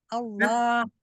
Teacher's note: Karena lidahnya infitah ya, gitu mendapat. Iya, lidahnya tetap infitah, tidak menjadi itbaq